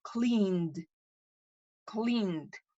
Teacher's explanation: Puedo decir clean y sigue vibrando mi garganta. Entonces se va a pronunciar como una D.